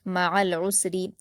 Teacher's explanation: مع العسر، عین کو سین سے ملا دیں گے اور را پر زیر کی حرکت باریک پڑھتے ہوئے جلد پڑھیں گے